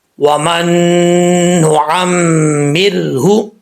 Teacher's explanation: میم کے اوپر شد ہے، غنہ کریں گے ایک الف کی مقدار، را ساکن سے پہلے زیر ہے میم کے نیچے تو را بریک پڑھا جائے گا.